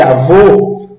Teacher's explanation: avô não abre Não precisa abrir tanto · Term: fechado